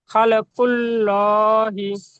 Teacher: লামের উপরে খাড়া জবর এসে খাড়া জবর আলিফ মাদ্দার সমতুল্য, সুতরাং একে এক আলিফ পরিমাণ টান দিয়ে পড়তে হয়। আর নিচে জের এসে যেটি হারাকাত হারাকাত তাড়াতাড়ি পড়তে হয় টান দিয়ে নিঃশ্বাস।